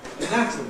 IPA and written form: əˈnætəmi (anatomy)